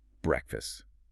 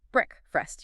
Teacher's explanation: because the word break exists, people think it sounds like break, but actually the correct sound is built on a short E